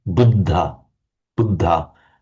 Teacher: dental D meaning the tongue is just behind the ridge of the teeth